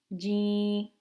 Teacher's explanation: we don't want to make it too soft and say me it should be a hard G let your tongue touch the roof of your mouth